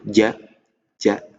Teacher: ja itu menempel penuh, ja, tidak ada angin yang bisa lewat.